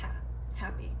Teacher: in the word happy, the stress is on that first syllable